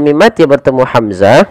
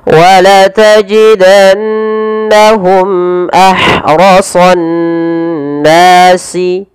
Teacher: Kemudian pada lafal mimati bertemu hamzah, ini kita namakan dengan idhar syafawi, dan yaitu harus dibaca dengan jelas suara mimnya tanpa ada penahanan